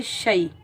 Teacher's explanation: शीन की आवाज़ जो है वो फैलती हुई महसूस होती है। शीन को हम याए साकिन के साथ मिलाएंगे।